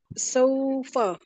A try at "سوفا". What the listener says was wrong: اس کو لمبا نہیں کرنا. واؤ سے پیچھے زبر آ گئی، یہ واؤ لین بن گیا. جی واؤ لین بن گیا.